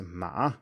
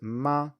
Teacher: to be pronounced the same although with a different tone so horse is ma with a third tone and mother is ma with a first tone